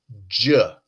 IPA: d͡ʒ